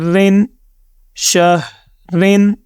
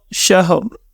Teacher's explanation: ہم نے یہ تصور کرنا ہے کہ اس کے نیچے کوئی بھی اب دو زیر نہیں ہے، اس کے اوپر سمپل ایک جزم ہے۔ ہم شین کو ہا سے جوائن کریں گے اور را کی آواز آخر میں اپنے منہ سے نکال کر ہم خاموش ہو جائیں گے